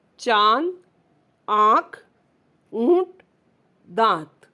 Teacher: अम का प्रयोग जब चंद्र बिंदु के रूप में होता है तो उसे अनुनासिक कहते हैं। इसका उच्चारण नाक और मुंह दोनों से होता है